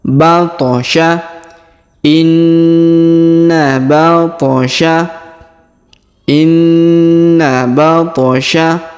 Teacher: huruf ba huruf tho kita pantulkan